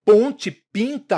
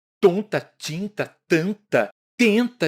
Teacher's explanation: os fonemas p e t ambos orais e oclusivos mas um bilabial em que os nossos lábios se tocam para emitir o som e o outro língua dental em que a nossa língua toca na parte de trás dos